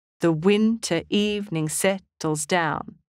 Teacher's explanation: Iambic tetrameter is the rhythmic pattern of 8 syllables, 4 unstressed and 4 stressed.